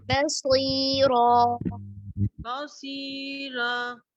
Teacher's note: बा को मोटा नहीं करेंगे, बसीरा करेंगे इसको, बा बिल्कुल बारीक होगा